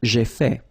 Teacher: So remember, final T is not pronounced.